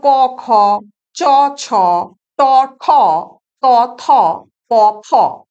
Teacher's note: তাহলে আমরা দেখে নিই যে ঘোষ ধ্বনি অঘোষ ধ্বনি ব্যাপারটা কি, কাকে বলে না, অঘোষ ধ্বনি হলো যে প্রতি বর্গের প্রথম এবং দ্বিতীয় ধ্বনির উচ্চারণের সময় কণ্ঠস্থ স্বরতন্ত্রের কম্পন হয় না বলে কণ্ঠস্বর মৃদু থাকে। এই জন্য এই ধ্বনিগুলোকে বলা হয় অঘোষ ধ্বনি বা আনভয়েসড সাউন্ডস।